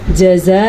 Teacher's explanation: اس مد کو ہم 6 حرکات عربیہ کے برابر لمبا کریں گے